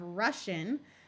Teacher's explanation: The S sound by itself disappears and gets taken over by the sh sound.